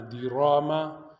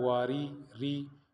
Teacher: را کو موٹا پڑھنا ہے، دیراما، لیکن جب زیر آئے تو باریک پڑھنا ہے